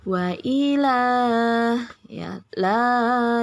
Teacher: ada Mad Thobi'i pada bacaan Wailah ya La dua harakat diayun sekali saja